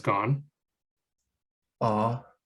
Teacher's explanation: it's really low in your mouth and probably constricted quite back in the throat